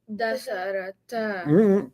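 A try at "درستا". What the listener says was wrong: Keep the letters in order. Darasa. Darasata. Darasata. Darasata.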